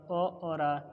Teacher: अ और आ ये क्या है कंठ से बोले जाते हैं